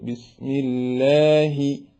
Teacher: മലയാളം പോലെ വലിയ ഹവോട് കൂടെയും പറയാതെ നേർപ്പിച്ച് ബിസ്മില്ലാഹി ഇങ്ങനെ പറയേണ്ടതാണ്